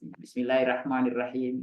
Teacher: kadang-kadang dia mengucapkan huruf ro itu tidak terdengar tebal, hanya terdengarnya tipis. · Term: ro tebal